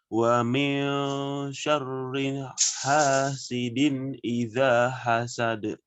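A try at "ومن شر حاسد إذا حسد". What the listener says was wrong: Langsung masuk. Wa min syarriha. Syarriha. Langsung. Jangan dikasih jeda.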